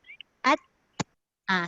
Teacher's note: masa kita sebut ta tu, masa nak menyebut sebelum nak keluarkan suara dia menahan dulu. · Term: tahan